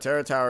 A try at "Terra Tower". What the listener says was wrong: Every time you say Terra Tower, it just sounds like you're saying Terror Tower.